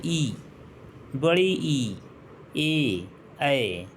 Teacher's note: इन सभी में हमारी जिह्वा ऊपर तालु से टच कर रही है, संपर्क कर रही है, तो ये अग्र स्वर हो गए। जब उच्चारण जीभ के अगले भाग से होगा और ऊपर नीचे की ओर यह स्पर्श करेगा तो इसे अग्र स्वर कहेंगे।